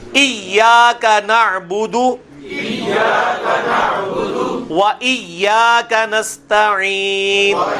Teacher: ایاک تو نہیں ہے, یہ ایاک ہے. لمبا بھی ہونا ہے اور یا کے اوپر تشدید ہے. جس حرف کے اوپر تشدید آئے وہ اپنے سے پچھلے حرف کے ساتھ بھی ملتا ہے، خود بھی پڑھا جاتا ہے، اور یہ الف مدہ بھی بن رہا ہے.